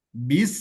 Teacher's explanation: Ada sofir juga, ada hamas yang keluar ketika mengucapkan huruf sin.